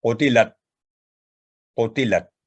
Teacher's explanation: تو پہلے لفظ کی مثال میں قاف پر سکون کی علامت ہے تو کلکلا ہوگا، اور آگے تو پھر سکس ساؤنڈ ہے، یقطعون، یقطعو و یقطعون، قتلت۔ تو یہاں پر تا جو ہے ساکن وہ اپنی جگہ سے ہلے نہیں، آواز لاک ہو جائے کیونکہ کلکلا کی آواز نہ آئے، قتلت نہ ہو، قتلت، قتلت۔